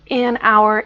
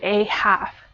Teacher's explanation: you use an hour because there's no h sound but a half because half has the h sound